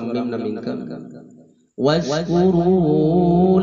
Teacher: mim pae bertemu dengan wawu kudu jelas teu kenging didengkeun